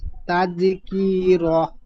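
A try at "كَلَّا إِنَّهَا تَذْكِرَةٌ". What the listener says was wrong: তাযকির, কি টান হবে না, কাফের নিচে জের আছে।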